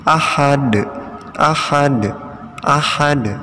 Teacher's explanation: Jadi dalnya dipantulkan ya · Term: qalqalah